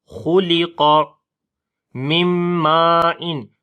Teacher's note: نون ساکن کے بعد میم آ گیا تو ادغام غنے کے ساتھ کیا جاتا ہے، اور یہاں پر میم کو لمبا کریں گے.